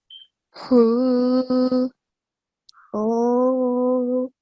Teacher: for big ha, the sound comes from middle of the throat.